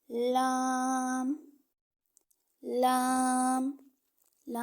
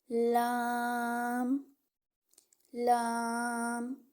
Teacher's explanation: जबान का किनारा और मसूड़ों से अदा होता है यानी जो हमारी जुबान के किनारे होते हैं ना आगे हमारी